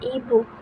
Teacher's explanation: lidah berada di depan dekat dengan langit-langit keras dan e seperti pada kata meja lidah berada sedikit di belakang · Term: vokal depan